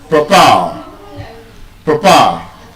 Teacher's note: So, the stress is on the second syllable.